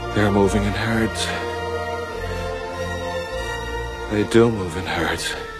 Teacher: Vous aurez la version longue du son OU dans par exemple move, bouger, ou encore lose, perdre.